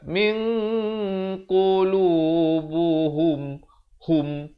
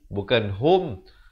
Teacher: Ha baris depan bunyi hu, bukan bunyi ho. Jadi bila bertemu mim, bunyinya yang sebetul ialah hum, bukannya hum.